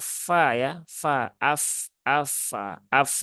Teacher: ujung dua gigi seri atas bertemu bibir bawah